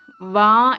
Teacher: പിന്നെ വാ എന്നുള്ള അക്ഷരം, വാ എന്നുള്ളതിന് 2 സ്ഥാനം ആവശ്യമുണ്ട്. ചുണ്ടും പല്ലും, ഇതിന്റെ രണ്ടും അതിന്റെ സ്ഥാനമാണ് വാ എന്നുള്ള അക്ഷരത്തിന്റെ.